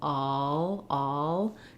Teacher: Keeping the back of the tongue down and just lifting the tongue for the L, all, can be a helpful way to practice on these words as well. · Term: caught law vowel